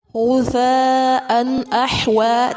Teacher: تنوین کے بعد حمزہ ہے، اظہار کریں گے